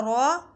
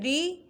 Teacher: رو پر پڑھنا ہے، زبر ہے. اب زیر ہے اسے باریک پڑھنا ہے.